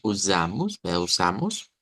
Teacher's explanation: Nótese el cambio aquí en la S por el sonido Z